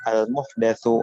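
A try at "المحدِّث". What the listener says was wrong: Kok muhdas apa? Kenapa baca muhdas? Muhdas itu orang yang punya ini. Muhdas. Nggak nyambung kalau muhdas. Muhdas itu bisa perkara yang baru, bisa ini. Kalau muhadis ya orang yang pakar hadis. Kok bahas hadis muhdas baca.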